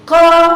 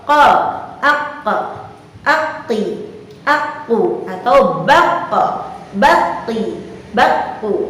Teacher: Yang ada pada huruf qaf cara pelafalannya itu adalah dengan menahan nafas atau suara jernih, suara murni yang dikeluarkan ketika melafalkan huruf qaf itu adalah suaranya benar-benar bersih, benar-benar murni, tidak harus dicampur dengan nafas. Contoh, qa, aq, aqi, aku, atau baqa, baqi, baqu, tanpa ada ikut campur daripadanya nafas.